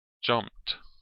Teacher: If the base form ends in an unvoiced consonant, such as the P in jump, then the sound used in jumped is a T sound.